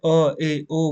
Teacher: जैसे ए ओ बोलोगे आप तो आपका मुंह आधा खुलेगा